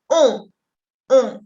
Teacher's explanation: Con una O muy cerrada y que viene acá de arriba, la nariz.